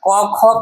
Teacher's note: क ख का उच्चारण कहाँ से, कंठ से।